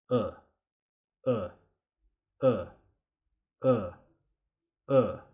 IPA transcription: ʊ